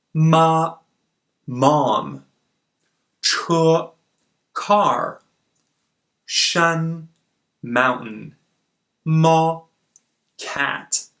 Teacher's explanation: you start on the fifth line and end on the fifth line meaning you have a high and constant tone it's like holding a note on a piano or holding your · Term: first tone